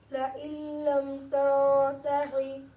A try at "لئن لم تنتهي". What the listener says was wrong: इसको तंतही हा ये अंदर से पढ़ना है, हा हल्क वाला नहीं है। तंतही ला अरजुमन्नका